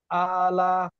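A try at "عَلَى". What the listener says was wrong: আতে টান হবে আলা।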